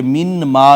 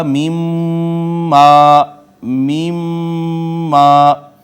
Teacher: میم نے نون کو اپنے اندر ضم کر لیا تو شد آ گئی۔